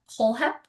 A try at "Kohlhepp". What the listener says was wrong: just got the first letter wrong. It's fine.